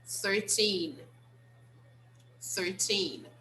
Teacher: like all the other t numbers we have to use the stress on the second syllable so the second syllable is the strongest